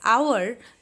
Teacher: Though that starts with H, I pronounce it as hour that has a vowel sound.